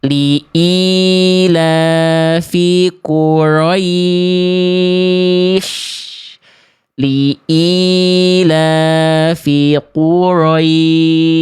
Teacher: Ro-nya hilang getarannya kayak orang bule.